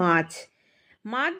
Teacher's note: আমরা যখন মাছ বলছি এখানে কিন্তু আমরা কোনো গ্যাপ আসছে না, আমাদের কোনো ঝোঁক নেই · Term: একটা দল